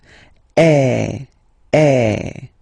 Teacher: have to produce is e so it's really open I mean the sound is really open and normally your mouth should be opened a little bit more